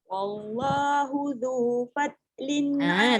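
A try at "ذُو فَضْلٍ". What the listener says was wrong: Tak boleh fat. Fat dia jadi dal. Fadlin. Fadlin. Lembut sikit. Jangan terlalu laju jadi fat.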